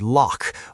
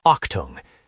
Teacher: Think of a rough scratchy sound in the back of the throat like the ch in the Scottish word lock or the German word octung. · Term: velar fricative